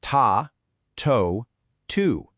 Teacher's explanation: It's harsh, it's immediate, and there is absolutely zero tish sound lingering around in there. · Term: clear T